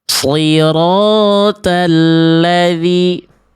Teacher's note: dibaca jadi huruf ta. Vokalnya juga vokal-vokal yang betul-betul vokal a murni atuh ya